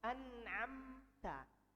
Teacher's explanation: Tapi kalau yang izhar seperti an'amta, bagaimana mau digabungkan mim dan huruf ta? Makhrajnya ta di atas, mim di bibir, nggak mungkin. Makanya dijadikan izhar, jelas, dibaca mimnya dengan jelas. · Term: izhar syafawi